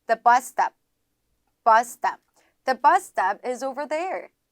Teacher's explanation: 첫 번째, 이제 bus stop 유형이라고 들어가 있는데 이게 뭐냐면 여기 지금 S랑 자음이 같거나 유사한 자음이 연달아 들어가 있죠. 이렇게 되면은 S를 한 번만 발음을 해주시면 돼요. 앞에 있는 S를 뺀다고 생각하시면 되겠습니다.